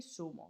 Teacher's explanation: El seseo confunden Z y C por S.